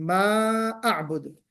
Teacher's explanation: میم پہ جو مد ہونا چاہیے ما اعبد لمبا والا مد ہونا چاہیے, وہ بھی نہیں کھینچا آپ نے, تو اس کو ہمیں کھینچنا بھی ہے ما, پھر اس کے بعد اعبد حمزہ بھی ہمیں کلیئر پڑھنا ہے.